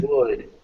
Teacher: even though would has this L, you don't pronounce the L.